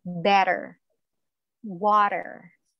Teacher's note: Letter T is pronounced as fast or soft D when it is found in between two vowels, A, E, I, O, U.